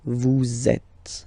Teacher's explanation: vous is ending with S, and then you tend to make a little link between them. So vous êtes, z, it goes like that. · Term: liaison